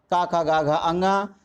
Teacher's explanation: का वर्ग कंठ से, चा वर्ग तालु से, टा वर्ग मूर्धा से और ता वर्ग दंत से और पा वर्ग ओठ से उच्चरित होते हैं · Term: उच्चारण स्थान